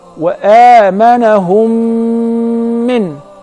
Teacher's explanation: if the first mim is non-vowel or sakinah, followed by a voweled mim. So I will merge the first in the letter and I will pronounce them as one. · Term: second rule of al-mim as-sakinah